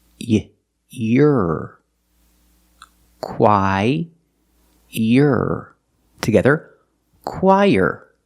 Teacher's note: when we link the qu and the r there's a sound in the middle that is y the sound y like yellow YY let's link The Sounds y